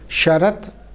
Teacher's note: a merger of two sounds, that is ta and da, in the word final position